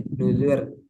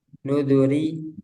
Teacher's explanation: kata nuduri di surah alqamar fakana fakaifaanazabi wauzur dibaca tarqik untuk menunjukkan huruf ya. Jadi ini asalnya itu nuduri tapi dibuang yanya nzur jadi nudur.